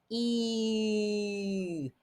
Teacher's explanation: make that e inside with your tongue e and then round your lips into an oo